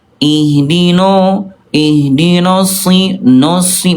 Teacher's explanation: huruf nun ya ketika lagi fathah kadang suka jadi menebal